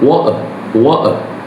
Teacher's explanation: the British speaker end on a pure soft schwa, the uh sound